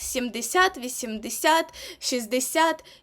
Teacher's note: а числівники які закінчуються на сяд матимуть наголос на сяд